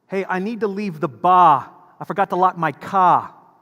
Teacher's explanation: You'll notice that they delete the R's, right, off of the words that they pronounce.